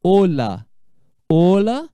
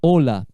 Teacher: La O é sempre fechado o som dessa letra